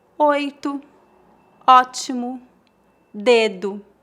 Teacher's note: Em final de palavras, a letra O é pronunciada como um U fraco, tal como nas palavras 8, ótimo, dedo.